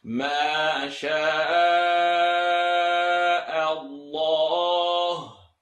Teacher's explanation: Please don't say ma, sha, sha, sha, chateau, sha, sha, Allah, Allah. I want to hear the lam heavy.